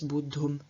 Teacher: the root ending in a voiced aspirate, causes the T of the tum to become voiced and aspirated itself, so to change into dum, and then the voiced aspirate at the end of the root loses its aspiration, and so instead of bud, we have bud.